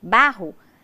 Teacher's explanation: Bá é a sílaba tônica e Rô é a sílaba átona